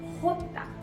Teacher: J is pronounced as jota from the epiglottis.